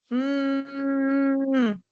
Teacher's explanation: sí vibra, ¿no? Entonces es sonoro.